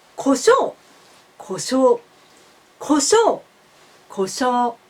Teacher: Please notice that shou is high, u is low. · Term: pitch accent